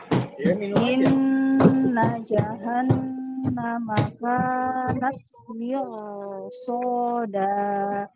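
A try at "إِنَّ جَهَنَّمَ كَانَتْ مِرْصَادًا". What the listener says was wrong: Jangan ditahan. Mirsada. Nggak ada slow motionnya Bu, nggak ada. Mirsada. Inna jahannama kanat mirsada.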